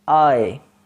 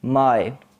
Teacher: tongue glides from open back open to half closed front okay the tongue glides from open to half closed and the sound is i as in my the third closing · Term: closing diphthong